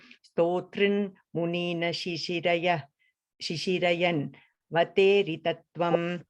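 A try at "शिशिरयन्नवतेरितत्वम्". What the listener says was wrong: The last line, it's it's a double r coming there, okay? Stotran munin shishirayenna vaterita, double na in that line. Yenna vateritatvam, the double na, right? Yenna vateritatvam.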